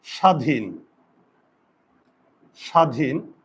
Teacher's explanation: ব ফলা আছে এখানে ব আছে আছে কিন্তু ব এর উচ্চারণ হয় না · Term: অন্তস্থ ব